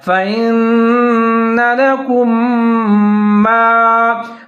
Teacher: فإن لکم ما لکم، اس میں جو میم ساکن ہے اس کے بعد پھر میم زبر الف ما مشدد ہے تو دونوں میم کو ساتھ میں ملا کر پڑھیں گے اور ادغام کریں گے غنے کے ساتھ